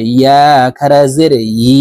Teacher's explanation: ইয়ার উচ্চারণ হবে জিব্বার মধ্যখান থেকে, কারণ ইয়ার মাখরাজ জিব্বার মধ্যখান থেকে।